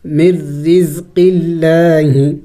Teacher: لفظ اللہ کے بارے میں بھی ایک قاعدہ یاد رکھے کہ لفظ اللہ سے پہلے جب زیر آ جائے تو لفظ اللہ کو باریک پڑھنا ہوتا ہے. تو یہاں پہ لفظ اللہ سے پہلے زیر ہے قاف کے نیچے، لفظ اللہ کو باریک پڑھیں گے